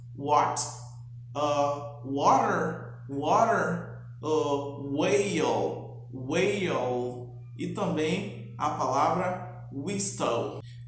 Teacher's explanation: Esse, apesar de ter esse som de W, nas palavras ele vai ter sempre som de U, né? De U, como se fosse uma vogal.